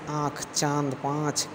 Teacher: अनुनासिक का उच्चारण नाक और गले दोनों से होता है